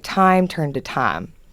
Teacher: pretty much the first thing that happened is the i became an a sound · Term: southern vowel shift